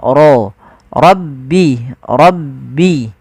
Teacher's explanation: lafal rabbi suara ro-nya ditebalkan